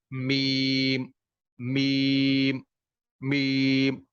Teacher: یہ دونوں ہونٹوں کی خشکی یعنی بیرونی ہونٹ کے حصے سے اس کی ادائیگی ہوتی ہے.